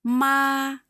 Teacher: First tone is flat.